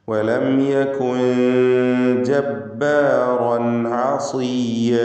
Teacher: ജബ്ബാറൻ റൻ എന്ന് റാഇനെ തഫ്ഖീം ചെയ്ത് തടിപ്പിച്ചുച്ചരിക്കണം. അതിലുള്ള റാഇൻ്റെ തൻവീനിന് ശേഷം ആയിന് വന്നതുകൊണ്ട് ഇൽഹാർ ഹൽക്കി നൽകി മണിക്കാതെ വെളിവാക്കുക.